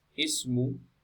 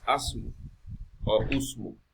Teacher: the wasl is pronounced with a kasra